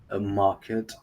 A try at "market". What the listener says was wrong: Yeah, but okay, you need to maybe the vowel needs to last for about double seconds. You need to double the seconds. For example, market, and then you drop the R.